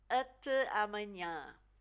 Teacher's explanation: So the A at the end of the word is more like the E in butter. It's quite soft. Not like ah, but more like eh.